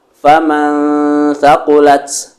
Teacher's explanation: mensamarkan nunnya ditahan dengan 2 harokat